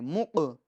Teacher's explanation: یہ قاف میں قلقلہ ہوگا کیونکہ حروف قلقلہ 5 ہیں، قاف طا با جیم دال، تو لہٰذا ہم اس کے اندر قاف میں قلقلہ کریں گے، یعنی آواز لوٹائیں گے